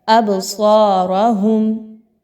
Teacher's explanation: با کو ہلا کے پڑھا جائے گا، آواز کو روکنا نہیں ہے بلکہ جاری رہنے کی طرف مائل کرنا ہے۔ ابصارہم، آگے دیکھیں تو را پر زبر ہے اور صاد آ رہا ہے، دونوں کو پر پڑھا جائے گا، صاد کو خوب موٹا کر کے پڑھا جائے گا منہ کو گول کر کے، اور را پر زبر ہے تو را کو بھی پر پڑھا جائے گا۔ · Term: حروف قلقلہ